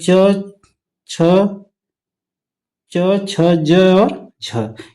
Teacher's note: वह वर्ण जो तालु से बोला जाता है। जीभ आपकी जाके तालु के पास लगती है। उसी को कहा जाता है तालव्य व्यंजन।